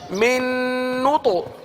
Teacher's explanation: کلکلہ ہو رہا ہے من نو تو اور تو کی آواز بھی پر ہے